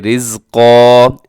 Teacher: اس پہ را باریک ہوگا لیکن قاف خوب موٹا پڑھا جائے گا